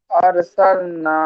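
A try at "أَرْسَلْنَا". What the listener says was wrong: আর নাই, আরো মোটা করে বলেন। আরো আরো মোটা করে বলবেন।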